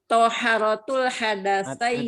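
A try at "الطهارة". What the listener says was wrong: Ada alnya enggak? Toharohnya ada alnya enggak?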